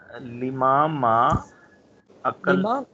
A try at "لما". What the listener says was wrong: لما کو لمبا نہیں کریں گے، اس لما لما. لما.